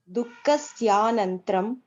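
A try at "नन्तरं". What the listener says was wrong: Dukkasya nantaram, not nantram. Why it is nantram? Nantaram. Nantaram. One word, if you mean. Okay, it's not one word, but when you are reading, you have to read like that.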